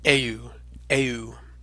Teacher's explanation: we sort of omit the H sound and hey you and say it all together